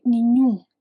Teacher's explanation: The strong part is actually the end except the end is nasal. That final M isn't really an M sound. It's there to make the vowel nasal like a nasal U.